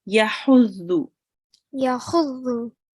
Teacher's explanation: this ha, it comes from the middle of your throat